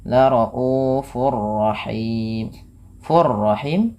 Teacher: Laufur rahim fur rahim ada idgam bila gunah. Cara membacanya tanwinnya masukkan kepada huruf ro dan ditahan.